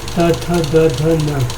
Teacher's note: त, थ, द, ध, न दंत से उच्चारित।